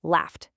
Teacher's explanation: that gh is an f sound, which is unvoiced, so it becomes laughed with a t sound